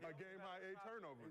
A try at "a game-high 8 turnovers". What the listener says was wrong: You didn't put the emphasis on the 8.